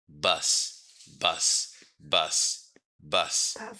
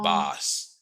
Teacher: It's a mid central vowel sound.